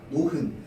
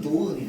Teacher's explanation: 노은 같은 경우에도 히읗이 발음되지 않습니다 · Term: 히읗 탈락